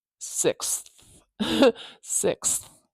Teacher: You have to keep the air moving for that TH, don't you? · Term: TH sound